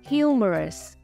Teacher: trọng âm rơi vào âm tiết thứ nhất